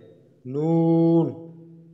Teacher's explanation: 9 number মাখরাজ জিহ্বার আগা তার বরাবর উপরের তালুর সঙ্গে লাগাইয়া নুন, আর 10 নম্বর জিহ্বার আগার পিঠ তার বরাবর উপরের তালুর সঙ্গে লাগাইয়া র।